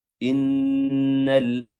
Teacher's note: nun tasydid ditahan durasinya. Innal, jangan langsung dilepas.